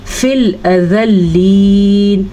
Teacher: یا کے اوپر کوئی حرکت نہ ہونے کی وجہ سے یا نہیں پڑھی جائے گی